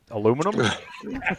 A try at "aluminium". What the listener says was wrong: Aluminum. Use the extra I.